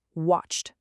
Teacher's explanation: The final sound is ch. That's unvoiced. So, we say watched with a t.